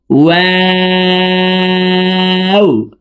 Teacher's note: 2 ঠোঁট গোল করে 2 ঠোঁটের মাঝে ফাঁকা রেখে ওয়াও হরফের উচ্চারণ করব,